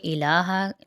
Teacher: لام پہ کھڑا زبر ہے، 1 الف کی مقدار کھینچیں گے